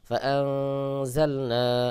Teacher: নুন সাকিনের পরে ঝা ইকফার হরফ ইকফা গুন্না হবে